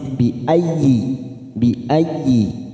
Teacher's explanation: masuk pada huruf iya yang bertasdid. Bi ayyi tanpa ditekan lama-lama, hanya masuk.